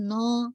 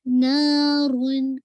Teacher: نا کو موٹا نہیں کیجیے گا، نو نہیں، نارون.